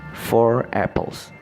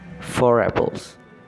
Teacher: If we pronounce the 2 words separately, we do not use an r sound between them, but if we pronounce them together, we say r sound between the words because it makes the word easier to pronounce quickly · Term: linking r